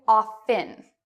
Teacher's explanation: other people say often with a silent T